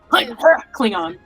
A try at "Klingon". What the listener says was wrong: I think it just, the emphasis needs to be more on the last syllable. A little stronger.